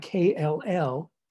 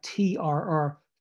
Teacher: the two liquids L and R uh can function as vowel like elements like Center of syllables by themselves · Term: pseudo vowels